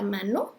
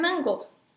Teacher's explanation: Aunque se escribe M-N-G-O, la lengua no la ponen en el paladar, la ponen en la garganta. Mango. Aunque diga NG, en esas dos juntas, NG, el punto y modo de articulación cambió.